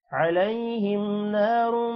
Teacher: را موٹا ہوگا اور میم کے ساتھ مل کر غنہ ہوگا